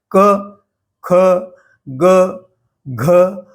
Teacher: इसके पांचों व्यंजन कंठ के माध्यम से उच्चारित होते हैं। इसलिए इन व्यंजनों को कंठ्य यानी कंठ से निकलने वाले व्यंजन कहा गया है।